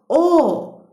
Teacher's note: Dodaqlarımız önə doğru uzanır. Ona görə bu dodaqlanan saitdir.